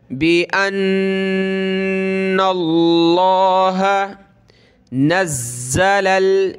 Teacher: ज़ा को सख्त करेंगे तशदीद की वजह से, और लाम आगे प्लस होगा लाम के साथ।